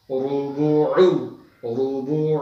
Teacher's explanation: हुरुबु, हा को दरमियान वाले हलक से हुरुबु, हुरुबु, रॉ को मोटा करेंगे, रुबुउ, रुबुउ, रॉ को पेश की वजह से मोटा करेंगे